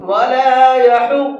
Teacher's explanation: یحض کے اندر یہ ضاد ہے، ضاد کو منہ بھر کے پڑھتے ہیں · زبان کی کروٹ کو اوپر والے داڑوں کی جڑ سے ٹچ کرنا ہے تو آپ کا ضاد نکلے گا